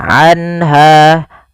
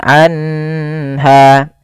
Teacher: cara membacanya adalah suara nunnya dijelaskan suara nun sukunnya, anha, dan tidak boleh ditahan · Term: izhar halqi